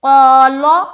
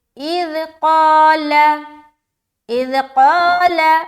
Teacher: قال، تو غلط ہو جائے گا کیونکہ اس نے لام کو بھی موٹا کر دیا۔ لام کو ہرگز ہرگز موٹا نہ کرے، لام کسی صورت میں موٹا نہیں پڑھا جائے گا۔ صرف لفظ اللہ کے لام کے علاوہ باقی ہر لام کو ہمیں باریک پڑھنی ہے۔